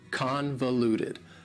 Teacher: Convoluted also has 4 syllables, and the stress is on the first syllable.